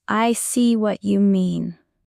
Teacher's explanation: Stress the word see to show understanding.